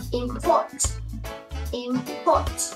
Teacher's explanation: Cao giọng từ port, port, import.